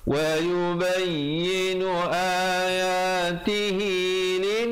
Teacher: dengungkan di situ wajibul gunnah 2 harakat.